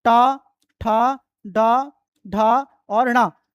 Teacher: इसके बाद टू मतलब हो गया ट वर्ग। ट, ठ, ड, ढ, और ण। इन का उच्चारण स्थान जो है मूर्धा होता है।